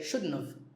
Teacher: Sometimes when we say it fast, we even say shouldn't have. We leave the T out.